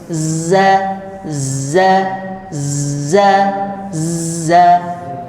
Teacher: saofir itu bunyi tipis angin menabrak sela-sela gigi bagian depan bunyinya tipis gitu · zai ya itu getarannya itu terdengar, namanya safir. Safir itu bunyi tipis.